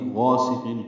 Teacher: غاسق غین پور الف مدہ ہے، دو حرکات لمبا ہے، سین صفیر کی آواز سے۔